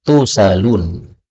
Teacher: ini kalau berhenti boleh dibaca tusalun, berarti hamzahnya hilang ya